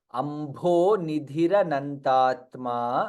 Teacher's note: भ is Mahaprana, again dha is Mahaprana.